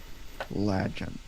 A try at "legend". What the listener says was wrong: Yeah, ledge instead of le. subtle. not the end of the world. It's kind of subtle, but we're at least putting some breadcrumbs